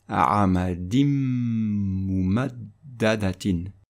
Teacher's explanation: Avec la règle de substitution, le tanwin sous le dal va disparaître et le mim va recevoir un shadda. Et on va prononcer a'amadim mumaddadatin.